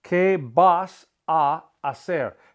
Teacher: Que vas a hacer. And remember the H is silent and the a, they run together.